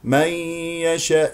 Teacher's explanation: نون مع الياء غنه مصاحبه من الخيشوم